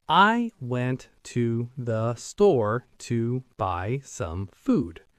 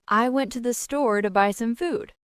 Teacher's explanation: Robotic version, I went to the store to buy some food. Every word the same length.